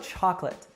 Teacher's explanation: the last syllable is unstressed now what about the second syllable we actually drop the second syllable · the stress is on the first syllable chalk and the last syllable is unstressed now what about the second syllable we actually drop the second